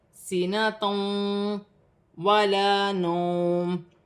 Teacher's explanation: 2 پیش کی تنوین کے بعد واو مشدد آ رہی ہے، یہاں پر ادغام مال غنہ کا قاعدہ ہے